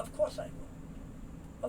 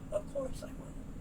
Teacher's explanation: This E is not sounded, so the S moves over, so you get of course I will. R is, if spoken at all, very light.